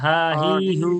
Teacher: এটা কণ্ঠনালীর শুরু থেকেই হবে